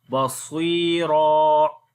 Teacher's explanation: Sad we read in heavy sound, and this is ya madda here we long. And when we stop here, so one fatha we skip and only one fatha we read.